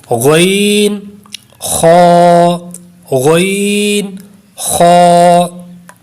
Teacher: غین اور خا اس کا مخرج ہے حلق کا اوپر والا حصہ، یعنی جب آپ ان کو پڑھیں گے تو حلق کے اوپر والے حصے سے ادا کریں گے۔ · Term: حروف حلقی